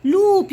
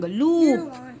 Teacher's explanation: Your lips are coming out. Then it's long.